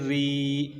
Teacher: قاف کے آگے ہے را، را کے اوپر جو ہے نا 3 دانتوں والی شد ہے پچھلی قاف کو ساتھ ملانے کے لیے، اور را کے نیچے 2 زیریں ہیں، یہ را باریک پڑی جائے گی، اور را کے آگے ہے لام، لام کے اوپر 3 دانتوں والی شد ہے پچھلی را کو ساتھ ملانے کے لیے، اور لام کے اوپر ایک زبر ہے۔